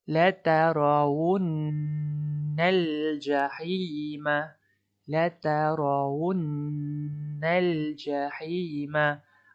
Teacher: nun ni ada bertanda syaddah. Perlu didengungkan dengan kadar dua harakat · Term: nun syaddah